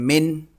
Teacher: نون نکالتے وقت زبان تالو کو لگ رہی ہے